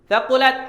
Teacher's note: hati-hati ketika sebut huruf ta, kena ada sifat hamas